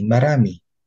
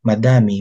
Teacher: Nagaganap ang pagpapalitan ng R at D kapag ang D ay nasa pagitan ng dalawang patinig.